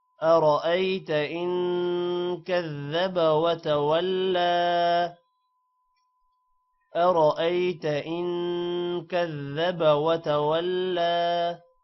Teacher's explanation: أرأيت را موٹا ہوگا ان پر غنہ ہوگا